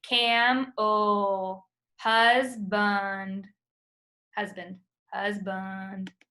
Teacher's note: It's a lazy sound. You hardly open your mouth. It's found in the unaccented syllable. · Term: schwa sound